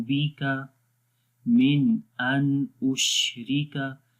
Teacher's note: मिन यहाँ पर भी सिंपल पढ़ेंगे, यहाँ पर इजहार हो रहा है। मिन अन को भी गुन्ना नहीं करेंगे, यहाँ पर भी इजहार हो रहा है।